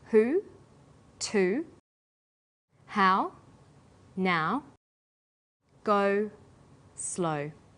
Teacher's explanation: High back vowels are oo, ow, and o. Sounds that are produced with the highest part of the tongue but close to the back of the mouth.